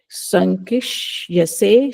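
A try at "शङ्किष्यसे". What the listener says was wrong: I could hear that Sa instead of Sha.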